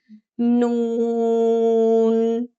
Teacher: नून का मखरज है जबान की नोक सामने के छह दांतों के मसूड़ों पर लगने से नून अदा होता है। नून नॉर्मल अदा होता है।